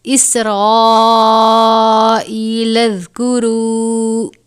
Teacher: سین حروف صفیریہ میں سے ہے، ادا کرتے وقت آواز سیٹی کی طرح نکلنی چاہیے